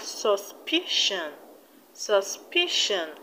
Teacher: in the word suspicion the stress will be on the second syllable from the end which is p i we have suspicion suspicion and in the